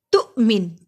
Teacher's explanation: تو پہ حمزہ پہ میں نے جھٹکا دیا کیونکہ حمزہ جزم کی صورت میں ہے، حمزہ جب بھی جزم کی صورت میں آئے گا ہم اس پہ جھٹکا دیں گے۔